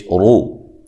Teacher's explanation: یہ تینوں چیزیں را کے اوپر ہوں تو را کو خوب موٹا کر کے آپ نے پڑھنا ہے